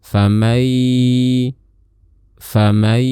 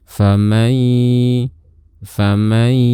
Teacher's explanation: mengeluarkan suaranya tidak sepenuhnya di mulut, melainkan keluarkan setengah dari suara kita melalui rongga hidung atau khayshum, kemudian keluarkan setengahnya lagi melalui mulut. Jadi untuk bagian yang di mulut itu adalah bagian huruf ya, dan bagian yang di hidung adalah bagian dari huruf nun, yaitu sifat ghunnahnya.